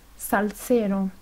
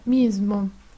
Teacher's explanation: La S española es sorda en palabras como salsero. Es sonora en palabras como mismo. La S española es la S italiana.